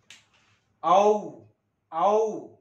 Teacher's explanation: औ कंठातून ध्वनी बाहेर काढायचा आणि ओठांची सहायता घेऊन त्यांची रचना करायची. हे झालं ओ औ कंठ्योष्ट आहेत ते.